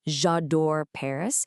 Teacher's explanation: you naturally have to pause between the two vowel sounds, the e in je and the a in adore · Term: elision